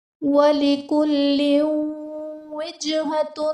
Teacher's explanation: تنوین کے بعد حروف یرملون میں سے واو آ رہا ہے تو یہاں پر ادغام مع الغنہ کا قاعدہ ہوگا، یعنی تنوین میں ہم غنہ کر کے پڑھیں گے۔